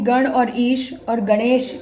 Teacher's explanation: अ और इ मिलकर ए हो जाता है